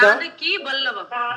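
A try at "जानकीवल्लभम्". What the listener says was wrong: It is not Vallavam. It is Vallabham. Bha. Vallabham. Vallabhan means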